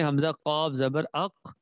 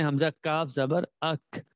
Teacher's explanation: अगर हम काफ को पढ़े हमजा काफ जबर अक, और अगर काफ को पढ़े हमजा काफ जबर अक, तो अदायगी से ये पता चलेगा कि काफ की अदायगी जुबान की जड़ के साथ है, और जो बारीक काफ है उसकी अदायगी जुबान की जड़ से थोड़ा हट के मुंह की तरफ